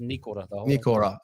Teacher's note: no emphasis on the or, it's just Nikora. A little bit of emphasis on the knee